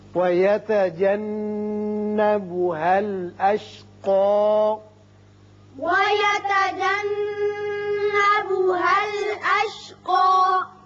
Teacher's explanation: یہاں نون مشدد ہے، غنہ کریں گے۔